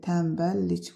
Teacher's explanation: Vurğu sonuncu hecaya düşür, düzdür.